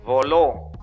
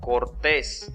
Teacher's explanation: su sílaba tónica es la última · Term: aguda